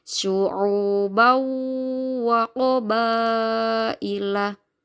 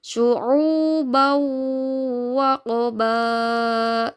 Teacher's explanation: Jadi suara fathah tanwinnya langsung masuk ke huruf wawnya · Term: Idgham bunah